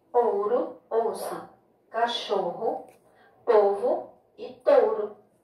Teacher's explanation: Na palavra ouro, o O da sílaba tônica, ou seja, o O da sílaba forte, ou, tem o som de O, enquanto que o O da sílaba átona, ró, tem o som de U